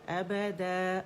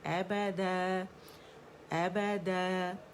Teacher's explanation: ابدا، اور آواز اوپر جائے گی، د کر کے امالا کر کے نہیں پڑھیں گے. ابدا ابدا، آواز اوپر جانی چاہیے کیونکہ اسٹریچنگ لیٹر جو ہے الف ہے اوپر کی طرف اس کی آواز کو کھینچ رہا ہے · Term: الف مدہ